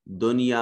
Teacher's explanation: دنیا میں نون ساکن ہے اور اس کے بعد یا، یہ اظہار مطلق کی مثال ہے